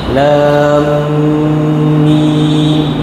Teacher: lam masuk dalam mim kena dengung sikit